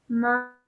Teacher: Meme with a fatha followed by an alif madda with a madda saghir on it. So stretching it for 3 to 5 seconds.